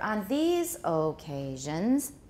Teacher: So these gets the high pitch. Then we go down for on these occasions, these tonic stress.